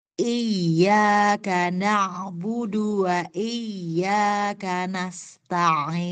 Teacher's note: huruf ainnya itu masih lari ke hidung, ke sini. Jadi kalau Ibu tutup, iyyaka na'budu, lari ketika baca ain, pasti suaranya lari ke hidung.